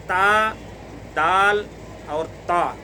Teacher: ये तीनों का मखरज एक ही है, यानी ज़ुबान की नोक और सनाया उलिया की जड़।